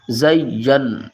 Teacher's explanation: یا کو نون سے ملائیں گے، یا نون زبر، ٹھیک ہے نا. زین، نون کے اوپر ہم گنہ کریں گے، نون مشدد ہے